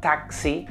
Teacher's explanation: la equis es una combinación de dos sonidos pero también tiene dos versiones de esa combinación de dos sonidos la primera sería la k y la s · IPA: /'tæksi/